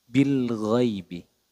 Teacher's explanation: makhrajnya huruf ghain itu pada ee aznal halqi atau pada ujung tenggorokan